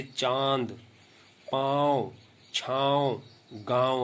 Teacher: अनुनासिक, इसके उच्चारण में नाक और मुंह दोनों का प्रयोग किया जाता है।